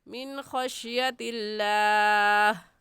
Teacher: نون ساکن کے بعد حروف حلقی میں سے خا آ گیا ہے، اس لیے اس نون ساکن پر غنہ نہیں کریں گے، جلدی سے پڑھ جائیں گے من خشیت اللہ.